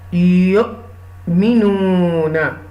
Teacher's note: Okay, this is the ya pe you will connect with the hamza sakina with a little bit jerk.